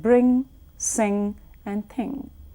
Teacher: In the case of we release air through the nose. Do not treat, as I mentioned, N and G as separate sounds when you're looking at words like bring, sing, and thing. It's just one sound. · Touch the back of your tongue to the rear end of your mouth and then release, as we spoke earlier, the air through your nose. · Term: nasal sound